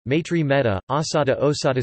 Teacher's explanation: Sanskrit ai and au always monophthongize to Pali e and o, respectively